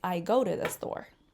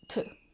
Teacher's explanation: when we actually pronounce them in a sentence, they're actually pronounced with a schwa sound